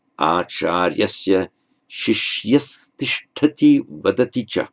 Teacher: Remember that the visarga changes into a regular dental S before a T, or a T, aspirated.